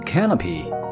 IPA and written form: ˋkænəpɪ (canopy)